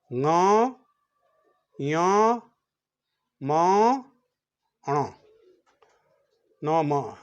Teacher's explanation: मुंह से और नाक से, वो छेद से भी हवा आ रही है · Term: अनुनासिक